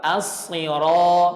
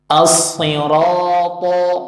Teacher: ro-nya harus tebal. Harus lebih tebal dari to. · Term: ro harus tebal